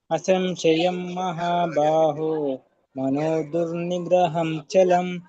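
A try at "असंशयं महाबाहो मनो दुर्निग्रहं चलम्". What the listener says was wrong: ಧನ್ಯವಾದಗಳು ಪ್ರಭುಜಿ ಚೆನ್ನಾಗಿ ಹೇಳಿದ್ರಿ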